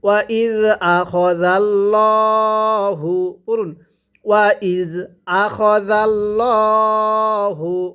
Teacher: ওয়াও জবর ওয়া, হামজা জাল জের ইজ, ওয়া ইজ, হামজা জবর আ, ওয়া ইজ আ, খ জবর খ, ওয়া ইজ আ খ, জাল্লাম জবর জাল, লাম খারা জবর ল, হা পেশ হু, ওয়া ইজ আখাযাল্লাহু। যদি আল্লাহ শব্দের পূর্বে জবর থাকে তাহলে আল্লাহ শব্দটিকে মোটা করে পড়তে হবে।